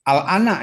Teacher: Lam sukun bertemu dengan hamzah tidak bisa diidgham. Dia mesti dibaca izhar. Izhar dia. Tapi A-nya itu, hamzah pertamanya itu dibacanya 6.